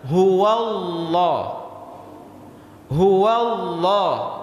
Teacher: Di sini huwa baris atas, sebelum lafaz Allah baris atas, maka lafzul jalalah di sini harus dibaca tebal.